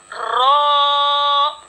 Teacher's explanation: इसको पढ़ेंगे रो। कपकपाहट आएगी जबान में, ठीक है। रो, जबान का किनारा और दांतों की जड़ के ऊपर तालु की जानिब वाले हिस्से से रो अदा होता है।